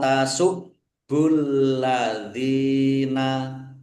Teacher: Baknya dibaca double, ada tasdidnya ditekan. Biar tampak doublenya ditekan.